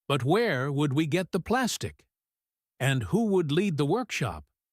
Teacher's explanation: The stress falls on the question words where, who, and the key nouns plastic, workshop. In English questions, the rhythm usually goes up at the end. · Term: questioning rhythm